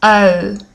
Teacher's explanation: i wanted to really focus on my lips and see how my lips become very round